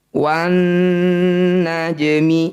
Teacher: Jim dipantulkan tapi kecil saja, mengalir saja, tidak boleh berlebihan. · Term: qalqalah sugro